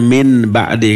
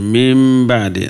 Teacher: Bisa idhar, bisa idgham, bisa ikhfa, bisa iqlab, tergantung huruf yang datang setelah nun mati tersebut ya. Kalau nun yang datang setelah nun itu huruf ba, namanya apa? Iqlab. Nunnya berubah menjadi apa? Mim.